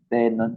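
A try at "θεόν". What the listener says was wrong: Or close to that, pero walang letter N sa gitna. Nasa huli. Teon.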